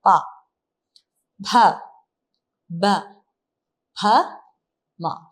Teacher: നമ്മുടെ നാവ് എവിടെയും അനങ്ങിയിട്ടില്ല മേൽചുണ്ടും കീഴ്ചുണ്ടും മാത്രം മാത്രമാണ് പറയുന്നത് പ ഭ ബ ഭ മ ഇ അത്രേ ഉള്ളൂ മേൽചുണ്ടും കീഴ്ചുണ്ടും മാത്രമാ